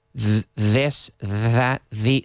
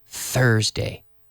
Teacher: We have the voiced one, this, that, the. So we have the activation in the vocal cord.